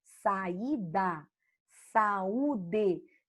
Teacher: Você divide e fica cada vogal em uma sílaba. Isso é um hiato.